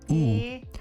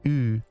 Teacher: The typical American U is pronounced at the far back of the mouth, pronounced like ooh. The Californian U is pronounced more in the middle of the mouth, sounding like ooh.